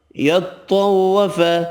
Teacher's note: یطوف طا حروف مستعلیہ پر پڑھیں گے